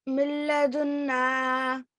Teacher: you won't hear the end sound. It's going to disappear into the ra and the lam. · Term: Idgham Kamil